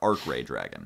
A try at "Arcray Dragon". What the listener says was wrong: It's one word, Arcray.